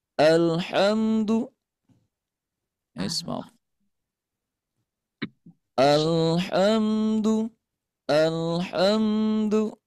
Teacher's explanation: Nah di sini alhamdu h-nya ya berdesis